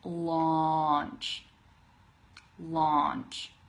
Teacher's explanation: it's like a deeper ah sound